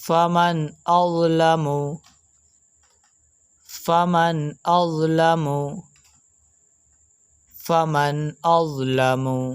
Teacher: اس جگہ پر نون ساکن موجود ہے، اور اس نون ساکن کے بعد حرف حمزہ موجود ہے جو کہ حروف حلقی میں سے ہے، تو اس نون ساکن میں اظہار کا قاعدہ لگ رہا ہے، تو اس وجہ سے ہم اس نون ساکن میں گننا نہیں کریں گے۔